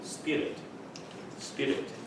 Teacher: With the R in the middle, it's best to flick it like the British do.